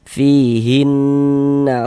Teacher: Sehingga di bagian hin, di bagian situnya tuh suaranya itu kita tahan sejenak kita gunahkan. Nah, kira-kira sepanjang dua harakat. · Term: ghunah musyaddadah